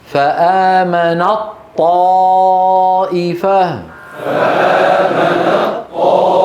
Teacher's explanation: تختفي التاء و تتحول الى طا